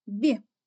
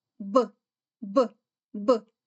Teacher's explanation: у слові білка звук Б який м'який А у слові дуб звук Б твердий